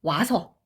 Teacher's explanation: 반모음과 단모음이 만나서 이중모음이 되는 이런 경우 모음 축약이라고 이야기를 합니다